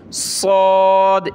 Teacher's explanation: دیکھیں صاد کو موٹا کیا جاتا ہے، سین میں سیٹی کی آواز آتی ہے اور صاد میں بھی، لیکن سین کو پتلا کر کے پڑھتے ہیں یعنی سین، اور صاد کو موٹا کرتے ہیں صاد، اس طرح، ٹھیک ہے۔